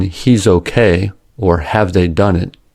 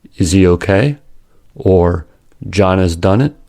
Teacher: H dropping in connected speech. Initial h is dropped, not pronounced, from function words in certain situations. Examples of H function words are forms of the have verb, have, has, had, and pronouns that begin with H, he, his, him, her.